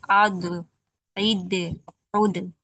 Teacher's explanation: जब हम जुबान का किनारा ऊपर के दाढ़ों की जड़ों से लगाते हैं तो हमारा ज़ौद अदा होता है। कल हमने स्क्रीन पे ग्रीन कलर से दिखाया था, राइट और लेफ्ट, वही जुबान का किनारा हमारे जो 10 दांत थे, 10 टीथ थे जो जड़ों से लगते हैं, तब हमारा ज़ौद अदा होता है।